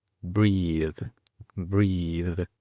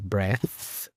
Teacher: con una TH sonora al final, es decir, vibra